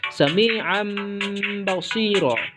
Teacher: tanwin itu dijadikan bunyinya seperti huruf mim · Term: iklab